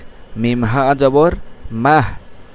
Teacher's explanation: হলকে শুরু থেকে উচ্চারিত হবে কোথাও কোনো চাপ পড়বে না বাতাস বের হয়ে আসবে